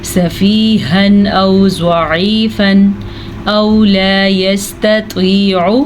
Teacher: نون تنوین کے بعد حمزہ آیا ہوا ہے, تو ہم یہاں پہ دونوں کو ظاہر کر کے بغیر غنّے کے پڑھیں گے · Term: اظہار